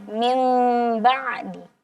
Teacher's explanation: bertemu dengan huruf ba maka bunyi nunnya itu kita ganti menjadi mim dia jadi mim ba'di nah seperti itu jadi itu yang kita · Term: al-iqlab